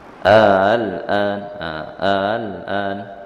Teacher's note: Tapi hamzah yang kedua tu kita perengan, tidak kita tekan. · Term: tashil